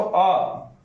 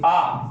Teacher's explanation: वैसा स्वर जिसके उच्चारण में ह्रस्व से दुगना समय लगे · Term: दीर्घ स्वर